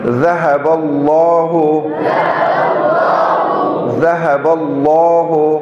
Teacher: لفظ اللہ اس سے پہلے زبر آگے, اس کو موٹا پڑھیں گے